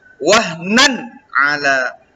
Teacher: Kemudian yang kelima, pada kata wahnan ala ya, Itu terdapat dua hukum tajwid, yaitu izhar halqi, ya, di mana tanwin atau baris dua pada huruf nun itu nan bertemu dengan ain, itu tidak boleh didengungkan